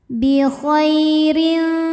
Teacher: Huruf ra dibunyikan secara tarqiq, sebab ra berharokat kasrah tanwin ya. Maka cara bacanya adalah tipis ya, ringan, tidak perlu mengangkat pangkal lidah.